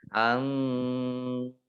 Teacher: nun sukun bertemu dengan huruf fa, bacaan ikhfa. Dibaca samar-samar